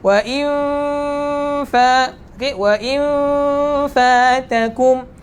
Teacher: makhraj huruf fa bibir belah bawah, bertemu dengan gigi kacip belah atas. Bibir belah bawah bertemu dengan gigi kacip belah atas.